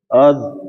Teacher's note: Do, won zon, zin, dun, zun, ad, l nah ini apa namanya seperti tadi ini kan jadi hamzanya tipis terus masuk ke huruf do yang sukun maka do-nya tebal